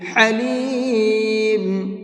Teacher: ہا کو درمیانی حلق سے نکال کر کے پڑھیں گے، درمیانی یعنی مڈل حلق سے نکال کر کے پڑھیں گے۔